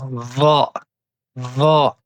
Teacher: pour la lettre Va, on va devoir mettre le bout de la langue en contact avec le bout des incisives supérieures, donc le bout des dents du haut